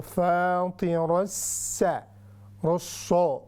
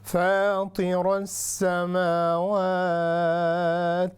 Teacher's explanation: ऐसे स्वाद इसको नहीं बना देना, हमने सीन पढ़ना